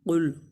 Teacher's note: قاف کو پر پڑھیں گے اور لام ساکن ہے، اس پر قلقلہ نہیں کریں گے